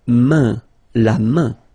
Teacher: this combination A-I-N is quite interesting because it will give you the sound un. So it's really a nasal, it goes in your nose, okay? And it's un.